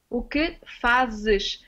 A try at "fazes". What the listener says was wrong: You pronounce it like a Z. Z. Fazes. Can do it like this. Fazes. No, not zhush. Z. With a Z. Z. It should be the other way around. It should be ZES.